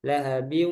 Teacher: Jadi harus keluar dari hidung ketika membaca idgham bi gunnah.